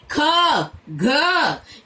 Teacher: महाप्राण में प्राण वायु की मात्रा अपेक्षाकृत जो है अधिक निकले, प्रत्येक वर्ग का दूसरा और चौथा।